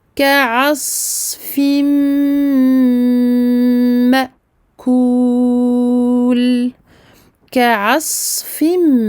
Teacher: Le sad possède également la caractéristique de la rakhawa. Donc il faut faire s'écouler ce sad longtemps.